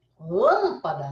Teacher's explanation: Esses fonemas, quando você inspira e você expira, o ar não sai todo pela boca. Uma parte sai pela boca e uma parte sai pelo nariz. Então, ao invés de você ter vogais sempre orais, que são aquelas que você produz totalmente na boca, você também tem vogais que são nasais, tá? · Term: vogal nasal